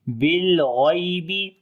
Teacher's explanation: لام کے اوپر صفت توسط کریں گے اور غین کو موٹا پڑھیں گے. یا لین نرم پڑھیں گے.